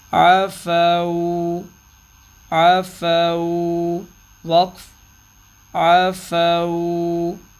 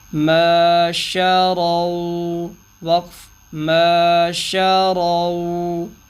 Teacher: واؤلین پر وقف، واؤلین پر وقف کرنا تھا تو 1 سیکنڈ ہی اس کی نارمل مقدار